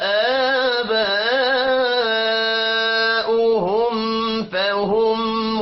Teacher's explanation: میم ساکن کے بعد فا آ رہا ہے، اظہار شفوی ہوگا، غنہ نہیں کرنا